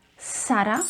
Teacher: You can either pronounce the letter Z as S, Sara, which is more commonly used for the Latin American Spanish. So you will hear them saying Sara, or you can say it Zara, Zara, which is a bit more common for the Spanish from Spain.